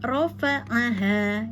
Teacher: hati-hati dengan ro tidak membulat ya, dengan hanya ada pada ujung lidah dengan langit-langit